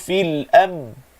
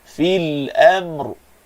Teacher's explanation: Kalimah al-amri ni huruf ra yang paling akhir, maka ra mesti sebut, tak boleh tak sebut.